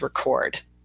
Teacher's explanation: our schwa is with the first E there with record